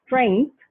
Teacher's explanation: in american english in a word like strength they insert a k right before the first sound between the engema and the fricative